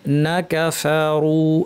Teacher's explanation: নাকা এমনভাবে পড়বেন যেন নুন আর কাফ একই শব্দের মধ্যে আছে, এভাবে পড়বেন, মাঝখানে কোনো টান দিবেন না